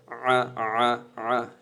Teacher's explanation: এত বের করা লাগে না ঠিক আছে জি তারপর হচ্ছে আইন আইন তো গলায় চাপ দিবে